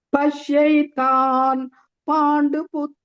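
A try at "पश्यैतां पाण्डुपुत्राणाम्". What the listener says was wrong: Pashyaitam Panduputranam. Makara. Pashyaitam. You are telling Pashyaitan. Yeah, it is Pashyaitam.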